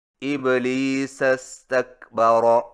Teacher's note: استکبر کا حمزہ گر جائے گا